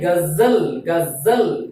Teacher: जिह्वा हल्का सा संघर्ष मसूड़े से यानी वर्त से करती है, इसलिए ज का जो उच्चारण है वो दो उच्चारण स्थान है इसके।